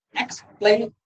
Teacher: The stress is on the second syllable, explain.